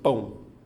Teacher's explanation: já tinha falado a letra A vai ser sempre vogal então a letra O só pode ser uma semivogal tem um som mais fraco então obedecendo a estrutura que eu coloquei então eu tenho ditongo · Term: ditongo decrescente nasal